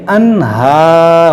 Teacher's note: دیکھیے انہار، یہاں پر نون ساکن کے بعد ہا ہے، یہاں پر اظہار کریں گے یعنی غنہ نہیں کریں گے